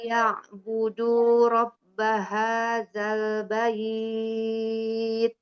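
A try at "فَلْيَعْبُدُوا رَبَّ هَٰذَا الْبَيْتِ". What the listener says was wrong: Ainnya masih ya. Falyabudu rabba. Falyabudu.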